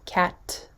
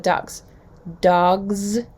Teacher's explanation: that s is voiceless and is following a voiceless t right so cat you can feel it no vibration do that